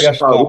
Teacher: আইন হবে গলার মাঝখানে